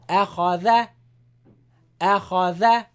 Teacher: Hamza is light and Dhal is light. Only Kha is heavy.